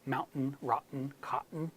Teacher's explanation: most of my American students would say mountain rotten cotton with a glottal stop